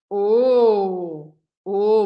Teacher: na hora que você faz esse o mais fechado o que vai acontecer é que a sua boca vai ficar mais de biquinho né redondinha como alguém falou mas a sua língua muda de posição então